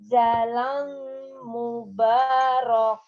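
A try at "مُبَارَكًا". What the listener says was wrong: K-nya dibaca satu. Mubarokah. K-nya satu ya. Mubarokah.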